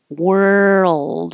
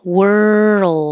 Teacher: you go from the r to the L and keep making sound the whole time